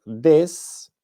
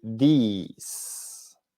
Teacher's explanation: la diferencia en la pronunciación es que uno es con i corta y el otro es con i larga